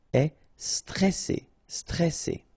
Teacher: here you get this E before the double S, so it will open the pronunciation of the E.